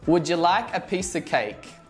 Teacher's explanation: Did you notice how of sounds like a schwa?